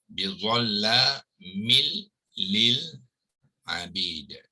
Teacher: So idgham bila ghunnah, idgham tu nun yang mati tadi dimasukkan sepenuhnya ke dalam huruf lam ni, jadi sebab itu lam tu ditasydidkan ya. Kita panggilkan idgham kamil ya.